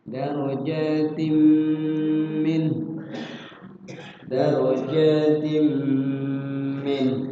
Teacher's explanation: tanwin ketemu mim, idgham bi gunnah. Dimasukkan tanwinnya ke mim atau diidghamkan dan seraya digunnah. Digunnah artinya dilakukan, ya, dilakukan dan barang-barang dua ketukan.